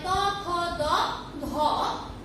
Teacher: দন্ত স্পর্শ ব্যঞ্জন এখানে 2 দন্তের স্পর্শ লেগে উচ্চারিত হয়